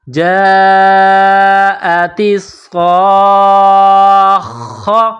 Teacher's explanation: صاد اور خا کو دبائیں گے تشدید کی وجہ سے · صاد میں سیٹی کی آواز پیدا کریں گے، صاد کو موٹا پڑھیں گے. صاد کے اوپر تشدید ہے تو تا کو صاد کے ساتھ ملائیں گے تشدید کی وجہ سے، اور صاد کو اگلے حرف خا کے ساتھ ملائیں گے تشدید کی وجہ سے.